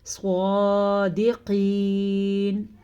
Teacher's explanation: یہاں پہ ہم نے پھر سے اخفاء کا قاعدہ کیا ہے، صادقین، صاد کو ہم نے پر پڑھا ہے کیونکہ وہی بات صاد حروف مستعلیہ میں سے ہے۔ قاف کو ہم نے پر پڑھا کیونکہ قاف بھی حروف مستعلیہ میں سے ہے